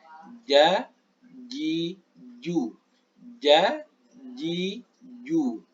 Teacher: Tengah dari rahang atas. Nah, ini tengah lidah bertemu dengan tengah rahang atas. Ini tengah-tengahnya. Maka di sini keluar huruf ja. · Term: makhraj jim